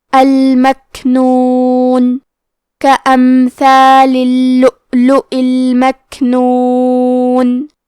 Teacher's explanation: کلمت اللؤلؤ میں حرف اللام پہ تشدید ہے تو ہم 2 حرف کے برابر لام کو پڑھیں گے. حمزہ پہ جزم ہے لہذا ہمیں حمزہ کو ظاہر کرنا ہے آخری میں حمزہ کے نیچے زیر ہے تو ہم زیر کو ظاہر کریں گے۔